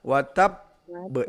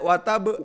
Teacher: Jadi ditahan watab be, tidak watab tetapi watab be, karena ada 2 ba. Karena setiap ada tanda tasdid di setiap huruf tersebut, maka huruf tersebut memiliki 2 huruf.